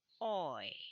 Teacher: so it glides from O to E. It becomes oi.